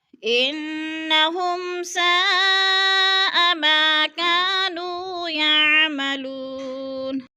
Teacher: ہو میم ساکن کے بعد سین حروف اخفاء میں سے آ گیا ہے تو ادھر اظہار شفوی ہے، غنہ نہیں کریں گے، لفظ کو صاف صاف یعنی ظاہر کر کے پڑھیں گے۔ ساء، ادھر مد متصل ہے، حروف مدہ کے بعد حمزہ اسی کلمے میں ہے تو مد متصل 4 الفی مد ہے، ہم نے اس کو 4 حرکات کے برابر لمبا کر کے پڑھنا ہے۔